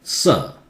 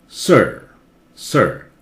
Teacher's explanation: in British, again, R is silent.